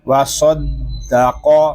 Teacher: قاف زبر قا، وصدق، یہاں قاف کو بھی پر پڑھیں گے کیونکہ قاف حروف مستعلیہ میں سے ہے۔